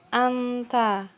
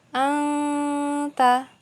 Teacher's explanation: dengung masuk ke dalam huruf ta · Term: idgham bigunah